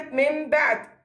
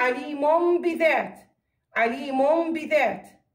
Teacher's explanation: نطق النون الساكنة أو التنوين ميما مع وجود الغنة إذا جاء بعد حرف الباء. قلنا حروف الإقلاب حرف واحد هو حرف الباء، حرف واحد هو الباء.